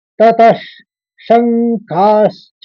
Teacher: दूसरा शब्द श से चालू है, तो आप समझ गए होंगे कि पहला शब्द को ततश करके उच्चारण करेंगे। दूसरे शब्द में श के ऊपर आघात है और ख के ऊपर आघात है। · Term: श का विसर्ग